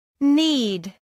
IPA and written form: niːd (need)